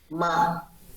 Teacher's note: Close your lips. Use a voice. M is voice sound. So we need to make the vocal cords vibrate by let them close, nearly touch or touch between the vocal cords inside your throat.